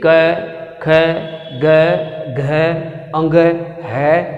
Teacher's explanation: अब इनका उच्चारण स्थान सीधा कंठ से हो रहा है। इसमें किसी भी प्रकार से जीवा जो है वो नहीं हिल रही है, न होठ हिल रहे हैं, सीधा कंठ से ये उच्चारित हो रहे हैं। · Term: कंठीय व्यंजन